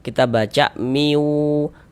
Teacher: Cara membacanya diidgamkan. Ee jadi bunyi tanwinnya ini dimasukkan ke huruf wau, melebur ke huruf wau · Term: idgham bighunah